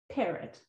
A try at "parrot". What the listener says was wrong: Try making the other chunk stronger. Well, which chunk are you making strong first in parrot? Can you tell? Pear, exactly. Try making the other one stronger. It just doesn't sound right.